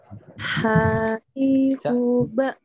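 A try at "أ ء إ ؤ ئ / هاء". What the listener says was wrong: Masih belum, ya masih belum ke bawah. Caranya itu ke di dada. Ya, caranya untuk latihan dada dulu. Ini makhraj tenggorokan tapi untuk latihan di dada dulu.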